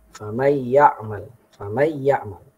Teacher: Ada riwayat yang membacanya tanpa gunnah.